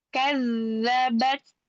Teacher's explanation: Hati-hati di sukun pada huruf zal, dialirkan rokhah ya. Kadzabat.